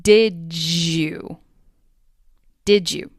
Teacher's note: The final D sound in did gets blended with the initial Y sound in you to sound like did you. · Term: assimilation